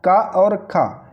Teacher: कंठ से इनका उच्चारण होता है यानी कि गले से इनका उच्चारण होता है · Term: कंठ ध्वनियां